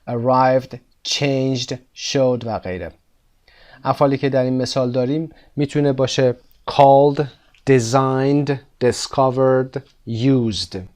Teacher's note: the vocal cords are vibrating when you're saying used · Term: voiced endings